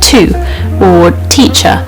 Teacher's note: You want to really like make sure that that T sound is there, but it's not a very hard tea that you spit out. It's like a a sort of light tea. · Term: T sounds